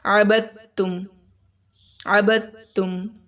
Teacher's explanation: دال کے اوپر شد ہے تو اس کو زور سے پڑھیں گے